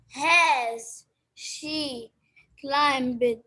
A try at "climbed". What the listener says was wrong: It's a climbed, not climbed. B is silent here.